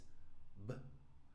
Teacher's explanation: But when I touch my throat, I do feel that vibration. So, this is a blocked or partially blocked sound, but it is a voiced sound. Still a consonant because it's blocked or partially blocked.